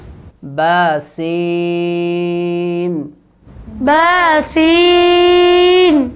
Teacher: سیٹی کی آواز آئے گی سین میں